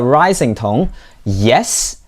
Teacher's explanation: yes with a falling pitch is responding positively or confirmation but with a rising tone yes it's like you're asking a question